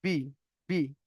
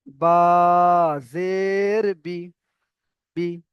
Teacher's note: তারপরে বলে উচ্চারণে, এবারে উচ্চারণের সময় আমি বললাম বি, বি, একদম রানিং বললাম, এখানে কোনো টান দিলাম না। আমি যদি এখানে বলি যে বা জের বি, তাহলে আমার ভুল হবে পড়াটা।